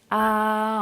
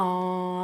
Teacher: Par exemple, si je prononce A, c'est une voyelle orale. L'air sort par la bouche. A. Mais si je prononce en, l'air sort par la bouche et par le nez.